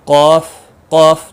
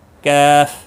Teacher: قوف تھوڑا جھٹکے کے ساتھ، کیف باریک آواز میں